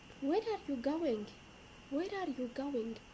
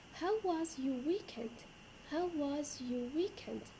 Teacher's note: so it goes up and then down falling intonation